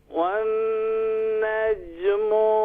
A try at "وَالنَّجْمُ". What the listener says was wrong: والنجم میں میم کو شارٹ کریں مزید۔